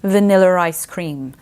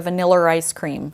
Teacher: when we're talking about General American which is aoic accent we don't add in those linking RS